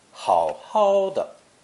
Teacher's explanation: With the second 好 changing to first tone